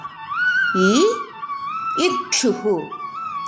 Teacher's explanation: നാവ് മുകളിലെ അണ്ണാക്കിന്റെ അടുത്തേക്ക് കൊണ്ടുവന്ന് ഉച്ചരിക്കുക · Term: താലവ്യം